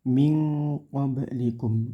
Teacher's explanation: Nun sukun bertemu qaf, itu namanya bacaan ikhfa. Ikhfa hati-hati dibaca samar dan dengung. Samarnya ming ng gitu ya.